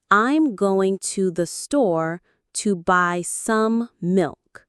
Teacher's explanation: Notice how going, store, and milk are stressed, and the small words are faster.